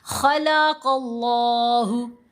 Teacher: تو ہم نے لفظ اللہ کے لام کو موٹا پڑھنا ہے